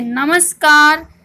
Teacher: पुर के बाद क ख या फिर प फ आए तो विसर्ग के स्थान पर स दंते सकार हो जाता है